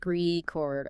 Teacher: If I buy a vinyl record, that's a noun. Stress is at the start.